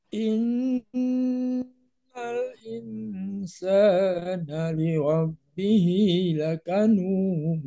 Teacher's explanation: ikhfanya ditahan dulu. Insana, tahan dulu sepanjang 4 ketukan.